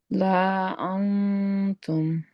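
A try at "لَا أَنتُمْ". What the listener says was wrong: तुम लाम को खींचना नहीं है।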